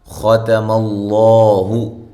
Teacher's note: خا کو موٹا، تا اور میم کو باریک۔ اللہ، لفظ اللہ کو موٹا، اس سے پہلے زبر ہے۔